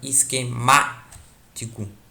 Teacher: O má é o mais forte aqui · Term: proparoxítona